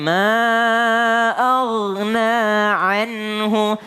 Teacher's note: Ingat huruf ghain ini tidak qalqalah. Jadi jangan ma'agna, enggak pakai jangan agna tapi ma'aghna anhu.